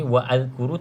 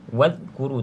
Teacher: ada Hamzah wasal kita sambung tak perlu baca Hamzah ni